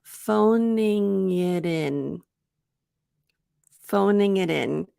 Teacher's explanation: Here we've got the G, the G to the I in it, and we have the T to the I in. So we have a double link.